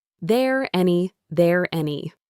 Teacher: The R sound at the end of there carries over. There any. There any.